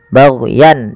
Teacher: suara tanwinnya dibaca dengan jelas karena bertemu dengan hamzah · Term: izhar halqi